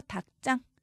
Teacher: 일단 닭장만 보면 대표음 기역이죠. 그 뒤에 지읒은 된소리로 발음해야 합니다.